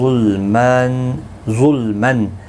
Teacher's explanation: ظا حروف مستعلیہ ہے، پر پڑھا جائے گا